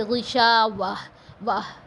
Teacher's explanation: گولتا کو ہا میں بدل دیتے ہیں، جیسے غشاوہ واہ ایسے پڑھیں گے، غشاوت وت نہیں پڑھیں گے. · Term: گول ہا